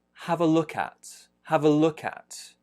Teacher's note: main stress is on look